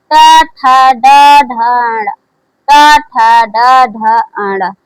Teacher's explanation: ट वर्ग का उच्चारण स्थान मूर्धा से होता है।